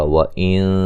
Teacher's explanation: نون ساکن کا باریک اخفا ہے